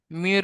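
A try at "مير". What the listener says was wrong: না, এখন যেটা এখন যেটা পড়লো সেটাতে মুখ গোল হলো না, তাই আমি জিজ্ঞাসা করছি।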